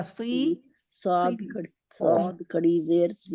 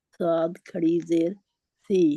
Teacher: और पीछे से जड़ जुबान की ऊपर उठी होती है, जिसकी वजह से ये मोटा होता है